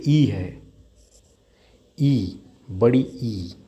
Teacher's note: अग्र भाग जीभ की स्थिति कहां रहेगी? अग्र में रहेगी।